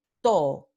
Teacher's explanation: Esto significa que la vocal o es prolongada, se pronuncia por más tiempo.